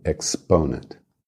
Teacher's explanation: E exponent, a força tônica é no PO, no ponent, exponent